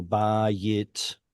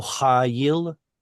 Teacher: All of these were seglets with a yod in there that turns it into an I sound